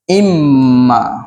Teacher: dia Im Ma maka Mim Ini dia ada syadah sini maka kita akan baca dengan dengung dua harakat